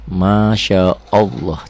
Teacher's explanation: Ya, tebel, tarkik, tipis, tebal, tafkhim, atau tafkhim itu seperti taglid. Kayak ini, masya Allah, tebal ya, karena sebelum lafaz Allah baris di atas.